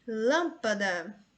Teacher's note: Palavra proparoxítona. Temos 3 sílabas. A antepenúltima é mais forte